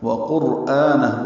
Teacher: واو ہونٹوں کی نا تمام گلائی سے ادا کریں گے